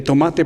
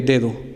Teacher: la t es un sonido sordo la d es un sonido sonoro